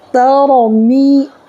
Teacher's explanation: می زیادہ نہیں کھینچنا ہے، ایک ہی الف کے برابر کھینچنا ہے، یعنی ایک سیکنڈ کھینچنا ہے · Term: یا مدہ